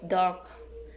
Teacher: Characteristic alveolar, stop, and voiced.